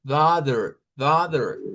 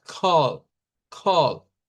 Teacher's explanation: piensa que es una O, pero no, es una A hacia atrás.